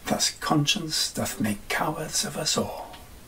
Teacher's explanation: read his blank verse with a more natural stress pattern, instead of trying to force it into a strict di-dum-di-dum-di-dum-di-dum-di-dum pattern